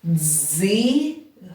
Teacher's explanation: бачите буква сполучення прозвучало як один звук І ми позначили його твердим приголосним